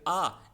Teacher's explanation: आ एक दीर्घ स्वर है। क्योंकि अ प्लस अ मिलकर के आ बनता है। तो इसमें जो समय दुगना लगता है।